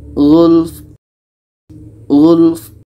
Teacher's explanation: ada dua huruf mati, lam dengan fa, maka dua-duanya tetap kita baca.